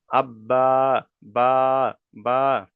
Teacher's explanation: তারপরে বা উচ্চারিত হয় দুই ঠোঁটের ভিজে অংশ হতে উচ্চারিত হয়, বা উচ্চারিত হয় দুই ঠোঁটের ভিজে অংশ হতে। ভিতরের যে অংশ দুটো ভিজে আছে ওই দুটো মিলিত হয়ে উচ্চারিত হবে বা।